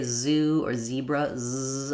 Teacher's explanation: I have a really strong voicing there. You can clearly hear the Z.